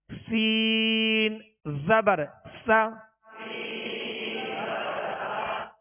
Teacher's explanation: سین کو سختی سے پڑھنا ہے, سیٹی کی آواز اس میں پیدا ہوگی اور باریک پڑھنا ہے.